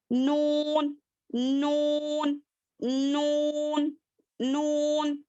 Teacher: मसूड़े यानी कि जड़, वहां पर टच करने से नून अदा होता है